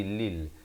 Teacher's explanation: beza lam baris kasrah bunyi li bukan bunyi le. Dia bertemu lam jadi lil.